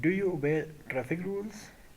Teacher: ان یس اور نو question our voice rises at the اینڈ. اچھا, شروع میں آست ہوتی ہے اور آخر میں اونچی ہوتی ہے رائزنگ انٹونیشن میں.